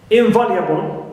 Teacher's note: in neutral, va is stressed